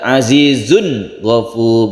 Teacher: tanwin bertemu ghain itu bukan ikhfa tapi harus jelas. Tanwinnya harus jelas, suara nunnya harus jelas.